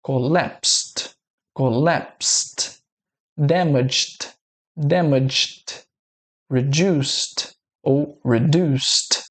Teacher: Veja que em nenhum desses finaaizinhos aqui nós temos a vibração das cordas vocais. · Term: som de T